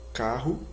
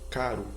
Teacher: o uso do r duplicado existe é justamente para indicar que mesmo entre vogais o r deve possuir aquela vibração forte e prolongada